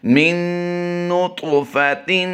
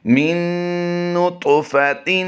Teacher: یہاں پر اس نون مشدد والی کے بعد آپ حرف طا دیکھ رہے ہیں، طا کی ادائیگی ہم پر کریں گے اور یہاں پر طا میں قلقلہ بھی کریں گے۔ طا حروف قلقلہ میں بھی شمار ہوتا ہے اور طا حروف مستعلیہ میں بھی شمار ہوتا ہے۔